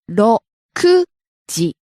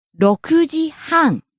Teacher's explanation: 6 o'clock is 6時 Ku is high, but half past 6 is 6時半 So 6時半 goes up at ku and stays high and drop at So low to high, back down to low high.